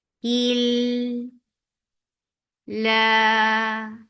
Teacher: And then attach with lafz jalala. Lafz jalala will be light here because you can see kasra before it.